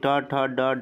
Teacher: ट वर्ग के अंतर्गत आएंगे, उनका उच्चारण किससे होगा, मूर्धन्य से होगा।